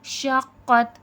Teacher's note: شین میں تفشی ہے، پھیلاؤ ہے